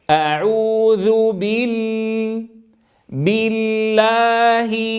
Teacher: أفتح الفم جيدا فتحا وسطا عند نطقي للألف، ثم أنطق بالكسرة تامة.